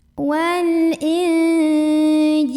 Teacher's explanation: Ada ikhfa ausat karena ada nun sukun bertemu dengan jim. Maka nun sukunnya dibunyikan samar-samar menuju huruf jim sambil ada dengungannya.